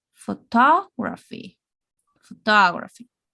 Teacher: always we are going to raise the voice raise the intonation in the middle